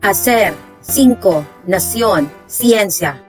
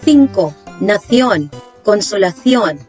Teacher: If letter C comes before e and e, it has two pronunciations. It is pronounced as s in America, such as hacer, cinco, nación, ciencia. But if it's in Spain, it is pronounced as th, as in the words cinco, nación, consolación.